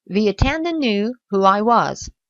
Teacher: Donc ici, the attendant, vous voyez que pour faire la liaison entre the et attendant, vous mettez un petit y invisible qui vous permet de faire la liaison naturellement